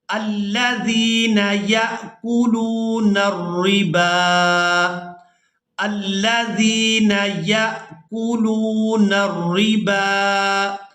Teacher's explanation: ہم نے با کو کھڑی زبر کی وجہ سے کھینچ کر ادا کرنا ہے، واؤ کو اور الف کو یہاں پر ادا نہیں کریں گے